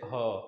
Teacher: ह मतलब कि कह लीजिए कि कुछ कहीं वगैरह टच नहीं होता, ह आराम से ह बोलिए, बिल्कुल आराम से, कूल माइंड से ह आराम से बोलेंगे, ह तो लगेगा हाँ ह बोल रहा है, ह आवाज निकल रहा है। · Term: संघर्षी व्यंजन